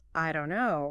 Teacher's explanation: The don't and the no kind of merge together.